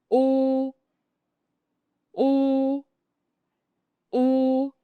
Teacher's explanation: For U, your lips are tight and round, like you are about to whistle or blow through a straw. The sound is deep, short, and comes from the back of your mouth.